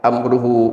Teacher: Tetapi wa amruhu karena bertemu dengan huruf alif, maka hukumnya menjadi silah tawilah. Yang lain panjangnya cuma 2 harokat, amruhu boleh sampai 6 harokat.